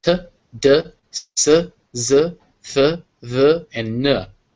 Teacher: these are made with a tongue against the back of your teeth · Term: Dental